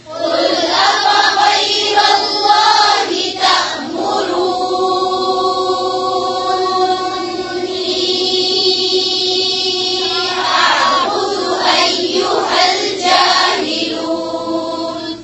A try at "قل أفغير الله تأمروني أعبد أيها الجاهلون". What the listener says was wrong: फिर से पढ़ें नून पर गुन्ना भी करें